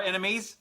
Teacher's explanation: the accent is in the first syllable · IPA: / ˈɛn ə mi /